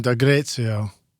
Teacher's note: I guess the accent is on the E.